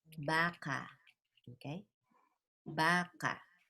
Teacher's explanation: So the stress is on the first syllable, baka. This is malumay.